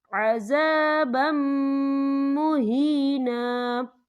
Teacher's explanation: وَأَعْتَدْنَا لِلْكَافِرِينَ عَذَابًا مُهِينًا، یہ دیکھیں عذابًا، با کے اوپر تنوین ہے، تنوین کے بعد جو ہے میم آ رہا ہے، اور میم جو ہے حروف یرملون میں سے ہے، تو یہاں پر ادغام ہوگا، تو ہم اسے غنّے کے ساتھ پڑھیں گے۔